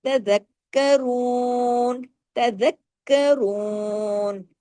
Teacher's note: پھر آگے ہم نے رو کو ہیوی کیا. کیوں؟ پیش کی وجہ سے. اور دو حرکات کھینچا بھی